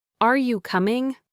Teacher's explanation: a question almost always ends with your voice rising. Are you coming? Your voice goes up on coming.